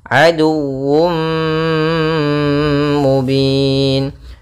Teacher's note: tanwin yang dimasukkan ke huruf mim. Tapi masih menyisakan suara sedikit daripada huruf tanwinnya. Sehingga di sini idghamnya kita mankan dengan idgham naqis. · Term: idgham bi gunnah